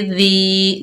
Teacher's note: जाल के नीचे ज़ेर, दाल नरमी से अदा होगा, आगे या साकिन है, दाल को या साकिन से मिलाकर पढ़ेंगे, 1 अलिफ की मिकदार खींच कर पढ़ेंगे